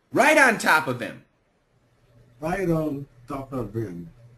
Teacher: we can cancel the H here